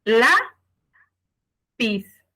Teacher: la sílaba tónica de la palabra lápiz es la. Por lo tanto, lápiz lleva acento en la A.